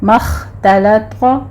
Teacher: خا کو پر پڑھنا ہے، تا باریک لام باریک